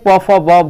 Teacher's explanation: ओष्ठ से प फ ब भ बोला जाता है